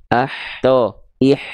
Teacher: dari bagian tengah tenggorokan kita nafasnya berbisik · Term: H kecil